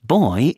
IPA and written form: bɔı (boy)